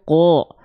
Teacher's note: huruf yang tebal itu ketika fathah basicnya dia akan terdengar menjadi vokal o teman-teman sekalian ya contohnya Apa contohnya huruf qof kan jadinya qo